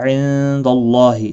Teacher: نون ساکن کے بعد حروف اخفا کا دال ہے، اخفا حقیقی ہوگا، گناہ کے ساتھ پڑھیں گے۔ · اللہ کا لام زبر کی وجہ سے پر پڑا جائے گا، اس کے اوپر کھڑی زبر بھی ہے، ایک الف کے مقدار کے برابر کھینچ کر پڑھیں گے۔